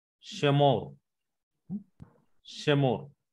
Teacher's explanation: It gives a very short and quick Segol sound. And we can, if we observe here, Shemor, it gives a short E sound in Segol. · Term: vocal Shiva